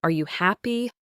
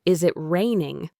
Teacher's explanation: have your voice go up at the very end. This tells the listener you're looking for an answer, an affirmation.